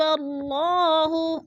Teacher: جیسے قومن غضب اللہ، اللہ پر پڑھا جائے گا، اس لیے اللہ سے پہلے لفظ با کے اوپر زبر ہے تو اللہ کو پر کر کے پڑھیں گے